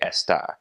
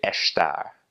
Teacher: when there is an s before a consonant they will make that s like an SH sound